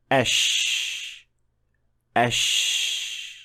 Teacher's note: With Sheen, there is no connection or touching between the hard palate and the middle part of the tongue whatsoever. · Sheen is a continuous sound that will flow as long as you can push air out. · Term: fricative sound